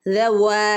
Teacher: വാവിന്റെ അടുത്ത് ഒരു അലിഫ് ഉണ്ട് അല്ലെ രണ്ടനക്കം നീട്ടി കൊടുക്കണേ